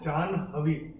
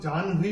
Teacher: इसमें एन का उच्चारण मैंने हा से पहले किया था